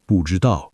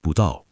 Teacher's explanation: But go to Beijing, talk to a taxi driver, he doesn't say 不知道, he says 不到. The zh disappears, the dao gets crushed. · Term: sound compression